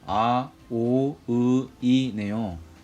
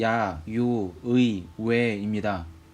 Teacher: 앞쪽의 묶음들은 입술과 혀의 모양이 일정하지만 뒤의 묶음은 발음을 하면서 입술의 혀의 모양이 변하네요. 모음을 발음할 때 입술과 혀의 모양이 변하지 않는 것을 단순한 발음 모음을 줄여 단모음이라고 합니다.